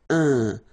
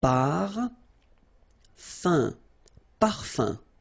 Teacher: So it's nasal and it's un. So it really goes in your nose. You don't pronounce the M at all.